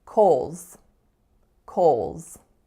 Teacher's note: The H is entirely silent. It goes into a dark L, and the final S makes a Z sound.